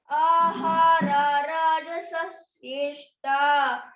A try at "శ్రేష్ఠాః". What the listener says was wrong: శ్రేష్ఠాః, విసర్గ ఉంది అక్కడ. ఆహార రాజసశ్రేష్ఠాః.